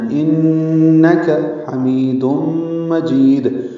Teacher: انک میں نون مشدد ہے، اس میں غنہ ہے، کاف باریک ہے، جلدی پڑھنا ہے، انک حمید مجید، ہا وسط حلق سے ادا کریں گے، می یا مدہ ہے، تنوین کے بعد میم آنے کی وجہ سے دوم میں ادغام ناقص مع الغنہ ہے، حمید مجید۔